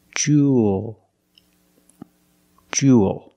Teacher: Make the long oo sound plus the dark L.